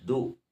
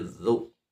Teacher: bukan du tapi zu. seperti digigit lidah kita tapi tidak. Kul a'udzu, jangan jangan monyong.